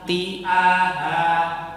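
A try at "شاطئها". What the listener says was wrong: Ya, hanya panjangnya sedikit, Pak. Syati'aha.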